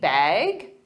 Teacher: Now, they might say, need a bag, or simply bag with a rising intonation to show it's a question.